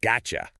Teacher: A hard T followed by a Y sound naturally forces the tongue into a position that creates a ch sound. Which is why the phrase got you effortlessly becomes gotcha.